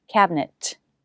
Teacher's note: notice i'm stopping the air i'm not releasing the t cabinet but cabinet this t is a stop t if it's